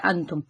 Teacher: نہ نون کی آواز کو ظاہر کرنا ہے، نہ ہی نون کی آواز کو اگلے حرف سے ملا کر مدغم کر دینا ہے، بلکہ اس کی آواز کو چھپانا ہے ناک میں غنے کے ساتھ. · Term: اخفا